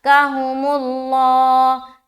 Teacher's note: لفظ اللہ کا لام کو موٹا بھی رکھنا ہے کیونکہ اس سے پہلے جو حرف میم ہے اس کے اوپر پیش کی حرکت ہے، اور جب ہم لفظ اللہ میں اسٹاپ کریں گے تو ہا کا جو پیش ہے وہ ہٹ جائے گا، اور یہاں پر ہم سکون یعنی کہ جزم لگائیں گے اور اسٹاپ کریں گے۔